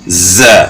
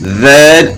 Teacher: اور زا جو ہے وہ زبان کی نوک ثنایا سفلا یعنی سامنے والے نیچے کے دو دانت جو ہیں ان کے ساتھ زبان کی نوک لگے گی, اور معمولی سی اوپر بھی سامنے والے اوپر کے دانتوں کے ساتھ بھی معمولی سی لگے گی. تو اس میں زا میں سیٹی کی مثل آواز پیدا ہوتی ہے